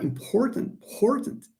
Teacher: So important here is also pronounced with a puff of air.